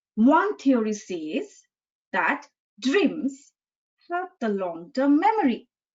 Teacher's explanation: That dreams, then I stressed upon the word dreams, the content word dreams. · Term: Word stress